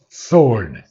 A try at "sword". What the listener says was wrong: The W is not pronounced again.